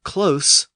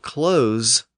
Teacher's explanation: we have close with an S sound, but we might close the door with a Z sound. Both words are spelled the same way.